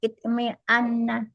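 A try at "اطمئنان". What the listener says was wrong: Itmi'na panjang alif sebelum akhir. Itmi'na.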